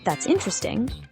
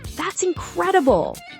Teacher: Intonation also expresses emotions and attitudes. Compare, that's interesting, neutral, falling, with that's incredible, rising, falling.